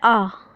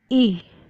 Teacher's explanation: कंठ से हमारा बोला जाता है आ और तालु से बोला जाती है ई